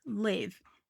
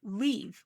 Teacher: For many English learners, especially my fellow Brazilians, we just have the long e. We don't really have the i sound.